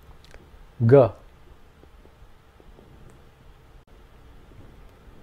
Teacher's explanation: It is similar to the first consonant, except that in this case the vocal cords are resonated and the sound comes from deeper in the vocal chamber.